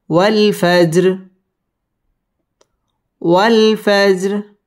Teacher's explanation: ওয়াও ঠোঁট গোল করে উচ্চারণ করতে হবে। ওয়াল ফাজ জিম কলকলার হরফ ধাক্কা দিয়ে পড়তে হবে। ওয়াল ফাজর র এটা বারিক হবে।